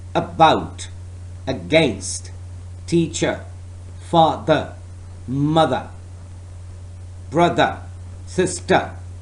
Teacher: Schwa. That is absolutely a central sound.